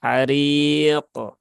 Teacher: qnya dia dalam kondisi sukun maka dia terbaca ada pantulannya ya harq dan pantulannya normal Ya pantulannya normal artinya tidak perlu · Ha ri biasa. Kemudian qafnya dia dalam kondisi sukun maka dia terbaca ada pantulannya